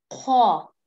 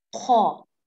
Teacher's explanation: Khaw comes out from the top part of the throat. Khaw. Okay?